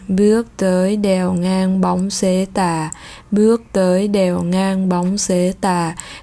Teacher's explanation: Nếu như mà khi mà chúng ta đọc tiếng Pháp mà chúng ta cũng đọc như cái cách đọc bài Qua đèo ngang vừa rồi bằng tiếng Việt, tức là giọng rất là trầm và giọng chúng ta sử dụng giọng ở cổ. Sau khi đọc hết một bài thơ như vậy thì các bạn sẽ thấy là cổ họng mình nó sẽ hơi đau.